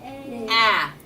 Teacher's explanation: It's open and it's voiced, so it must be a vowel.